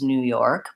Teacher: I tend to stress the second syllable or both syllables New York but mostly second syllable is more important so the